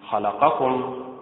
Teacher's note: خلقكم متعل، النبر فيها على حركة الخاء